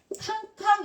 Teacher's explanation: 그 다음에 캉캉 이러면 크고 거친 느낌을 줍니다. 크고 거친 느낌을 주는 거센 소리